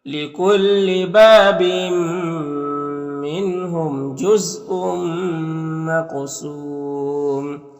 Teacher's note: तनवीन के बाद मीम में हुरूफ युमीन में से, तो इदगाम नाक़िस होगा · क़ाफ़ हुरूफ मुस्तालिया में से है, पुर पढ़ेंगे, कलकला में से भी है, कलकला भी करेंगे, और यहाँ पर वक्फ करेंगे तो मद्दे आरिज़ वक्फी होगा।